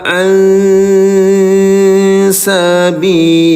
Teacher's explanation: Nun sukun bertemu dengan huruf sin. Samarkan bunyi nun sukunnya ya.